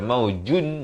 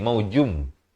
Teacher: Daripada nun masuk kepada mim terus. Kerana nanti tandun bertemu mim. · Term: idgham bi gunnah